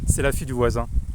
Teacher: So when we have like a cluster of like, or sequence of an E and a yod, or yod of an E, I kind of tend to like smooth it all and just pronounce the cardinal E and not a combination with a yod. Typically the word daughter, which in French is fille, so I can pronounce it like completely like with an E and a yod.